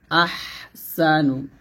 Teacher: হাটা গলার মাঝখান থেকে চাপ দিয়ে নিয়ে আসতে হবে